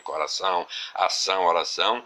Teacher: o tio foi empregado apenas com a finalidade de nasalizar ou dar um tom fechado a essa última sílaba da palavra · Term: nasalização